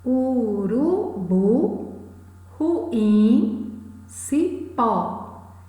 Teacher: Essas palavras têm a última sílaba tônica. São palavras oxítonas.